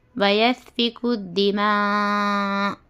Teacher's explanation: حمزہ کو پر سکون دے کر اپنے کو سانس ٹکانا ہے